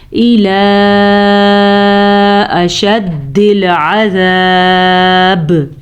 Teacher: وقف پہ قلقلہ پیدا ہوگا کیونکہ با کو ہم نے ساکن کر دیا